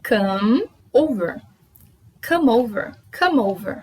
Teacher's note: A gente une o final do come para no som do M e une com over, a letra O, o som O. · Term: linking sounds